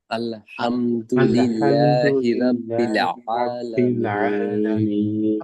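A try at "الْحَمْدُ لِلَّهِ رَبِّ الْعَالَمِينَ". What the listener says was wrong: রা বলা যাবে না র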